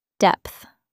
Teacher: it ends with a th sound. Your tongue touches the back of your top teeth.